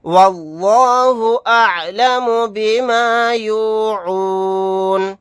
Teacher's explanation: یہاں پر لفظ اللہ کے لام کو پر پڑھیں گے یعنی موٹا پڑھیں گے